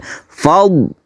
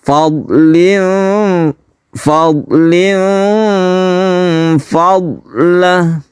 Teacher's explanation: Yang perlu diperhatikan di sini adalah sukun dot. Sukun dot ini bukan qalqalah, jadi jangan dipantulkan. Fad tahan, jangan dipantulkan.